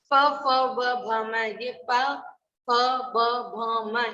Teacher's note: इनको बोलते समय हमारे दोनों होंठ आपस में मिलते हैं, इसलिए इनको बोलते हैं ओष्ठ्य ध्वनि।